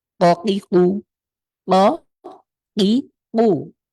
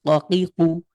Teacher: আমাদের জিভের গোড়া, তার উপরের তালুর সাথে খুব শক্ত করে লাগিয়ে ধাক্কা দিয়ে আমরা উচ্চারণ করি ককিকু